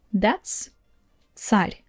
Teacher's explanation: Again ц is a little bit harsher than in English simply because all these three consonants they are always hard. Ж, ш, ц cannot be soft.